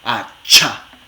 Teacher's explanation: Primero, ustedes pueden ponerse la mano aquí si quieren otra vez y hacen a-cha, a-cha. Entonces, fíjense cómo el aire primero se detiene y luego sale así como fricción. A-cha. Fíjense que los articuladores primero están completamente justos y luego se sueltan un poquito.